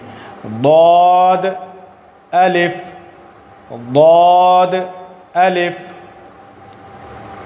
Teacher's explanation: ضاد کا مخرج کیا ہے؟ کنارہ زبان ڈاڑھ سے ملا کر جو چبانے والے دانت ہیں وہاں زبان کو ٹچ کرنا ہے اور پھر ضاد کی ادائیگی کرنی ہے